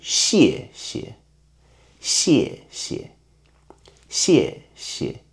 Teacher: we prefer the second syllable become weakened and softer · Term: neutral tone